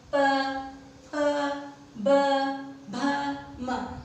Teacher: जब हम प का उच्चारण करते हैं तो हमारे जो होंठ है वो एकदम खुलते हैं और फिर बंद होते हैं